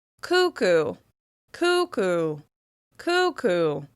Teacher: As you can hear, the first syllable, coo, is the one that receives the most stress.